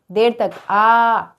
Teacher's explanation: आ दीर्घ हो गया। और आ देर तक आ बोलने वाला प्लुत हो गया